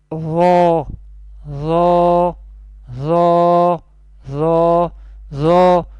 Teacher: Ro will be pronounced from the top of the tongue and the inner edges of the upper teeth. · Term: Lisani Makhraj